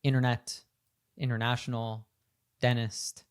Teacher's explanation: words where we have NT in the middle, like internet, international, dentist. So we lose that T sound